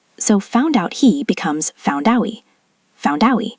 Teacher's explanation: we drop the H sound if we are speaking fast